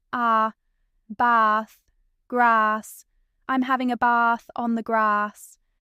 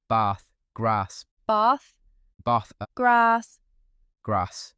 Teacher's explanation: Number 1, the A in words like bath and grass. In RP and the posh South especially, it's a long, open bath, grass.